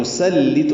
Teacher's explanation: یہ سین پڑھنا ہے، صاد نہیں پڑھنا، لام باریک ہے